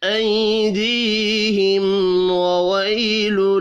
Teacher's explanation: میم ساکن کے بعد واو ہے، اظہار شفوی ہوگا، غنہ نہیں ہوگا